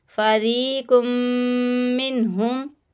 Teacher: यहाँ पे मीम साकिन के बाद मीम है, इदगाम शफ़वी का गुन्ना करेंगे